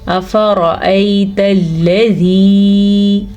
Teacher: अब यहाँ पे हमने या मद्दा की वजह से इसे खींच के पढ़ा है।